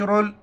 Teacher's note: रा पर पेश हो या रा पर ज़बर हो, रा को मुठा पढ़ेंगे।